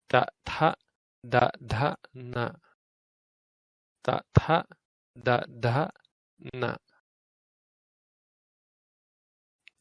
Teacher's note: The dentals are with your tongue touching the back of your teeth.